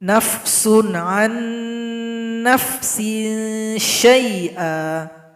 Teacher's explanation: Maka nun sukun tidak dibaca lagi karena telah gabung kepada huruf nun berikutnya. Kalau dilihat dari segi hukum bacaan nun sukun, maka ini masuk kepada idgham bi gunna. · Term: idgham mutamathilain